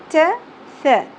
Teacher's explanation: ث نرمی سے ادا کیا جاتا ہے، سیٹی کی آواز اور شدت نہیں ہونی چاہیے